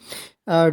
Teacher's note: सघोष व्यंजन में क्या होता है कि स्वर तंत्री में ज़्यादा कंपन होता है, और ज़्यादा कंपन होता है तो आवाज़ काफ़ी भारी हो जाती है